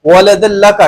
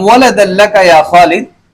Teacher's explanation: ادغام بلا غنہ کے تحت پڑھیں گے